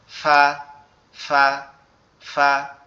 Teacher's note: আমাদের উপরের দুই দাঁত নিচের ঠোঁটের পেটের সঙ্গে লাগবে, লেগে উচ্চারিত হবে ফা।